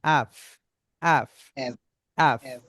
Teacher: এপের উচ্চারণ এপ না হয়ে অ্যাফ, উপরের উপরের দাঁত নিচের ঠোঁটে এসে কামড় লাগবে, সাউন্ডটা এপ না অ্যাফ, অ্যাফ, অ্যাফ, রাইট।